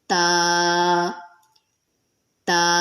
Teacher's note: زبان کی نوک جب اوپر والے دو دانتوں کی جڑ پہ لگے گی تو تا ادا ہوگا